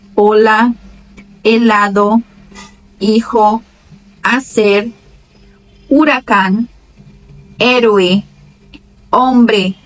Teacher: sempre que aparecer a letra H, a pronúncia vai iniciar com a letra seguinte, com a vogal seguinte